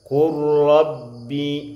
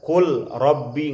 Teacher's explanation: di belakangnya lam dengan ro makhrajnya dekat. Mesti diidghamkan. Namanya idgham mutaqaribain, dekat sifatnya.